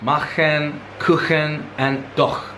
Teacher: tongue is touching soft palate at the back not the hard palate which is a very different sound